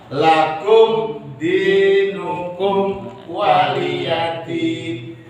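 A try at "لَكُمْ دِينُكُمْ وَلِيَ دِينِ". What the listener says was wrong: Jadi secara teori bagus, cuman ainnya itu masih parah. Ain kayak alif. Cuman sampean masih menyempelkan ain berarti alif. Ainnya ya. Masih kurang sedikit ainnya.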